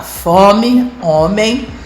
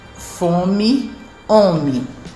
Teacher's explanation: O paulistano fala fome, homem, com vogais bem orais. No resto do país se diz fome, homem. · o falar paulistano se caracteriza também por desnasalizar as vogais seguidas de M ou N mais vogal, ao contrário do que acontece no resto do Brasil.